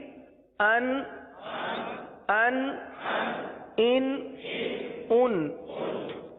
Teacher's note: نون ساکن کی جتنی آواز نکلتی ہے اتنی آواز ناک میں جائے گی اور نون ساکن کی آواز نکلے گی، گنہ نہیں ہوگا.